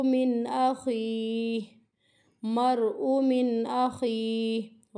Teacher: را کو موٹا پڑھنا ہے، را ساکن سے پہلے زبر کی حرکت ہے، حمزہ کو نہیں کھینچنا کیونکہ حمزہ متحرک ہے۔